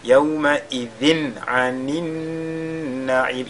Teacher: Ici c'est yawma, c'est pas yawma idhin, mais yawma idhin a. Tanwin suivi de la lettre ayn, on fait ici al-izhar. Donc, yawma idhin directement, n'est-ce pas, sans faire de ghunna.